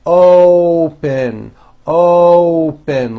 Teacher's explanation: to say this word you're not saying Op with an a you're using that hidden W you're bringing your lips forward · you're using that hidden W, you're bringing your lips forward and you're saying open, open, like that. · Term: o sound